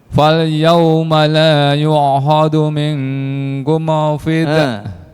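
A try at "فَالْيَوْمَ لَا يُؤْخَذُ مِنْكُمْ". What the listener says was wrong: Awas, mim sukun nggak boleh dikolkolahkan. Kum fi. Kum fi. Langsung. Kum fid.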